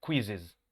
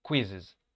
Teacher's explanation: El acento va en la primera sílaba